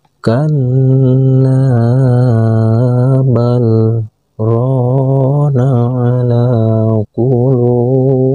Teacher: Dikarenakan antara huruf lam sukun dan huruf ro ada tanda saktah, maka ketika membaca bal, berhenti sejenak atau berhenti satu ketukan tanpa melepas napas, lalu melanjutkan bacaan rona